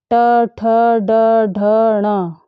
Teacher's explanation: इन सभी वर्णों का उच्चारण स्थान मूर्धा है। मूर्धा तलवे के पास ही है।